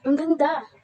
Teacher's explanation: Sa pangungusap na ito, ang huling pantig na da ay may malakas na diin at mahabang pagbigkas.